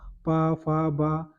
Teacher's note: दोनों ओट आपस में चिपक के तभी आप पा बोल सकते हो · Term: ओट व्यंजन, ओष्ठ व्यंजन